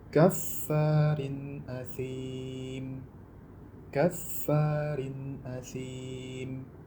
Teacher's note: Jadi kasrotain yang ada pada huruf ra dibaca secara jelas tanpa memanjangkan dengungnya. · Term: idhar